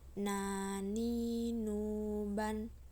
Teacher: dilafalkan dengan menyentuhkan lidah terdekat dengan langit-langit bagian depan. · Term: huruf nun